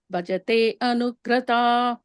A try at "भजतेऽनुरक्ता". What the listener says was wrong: Okay, but you can say it together instead of saying that explicitly. You just say it as one word if possible. Bhajatenurakta.